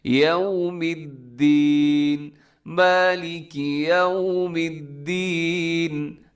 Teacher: یوم الدین کا خیال کرنا ہے، یو غلط ہو جاتا ہے، تھوڑا سا اپنے ہونٹ گول کرنے ہیں واؤ پہ۔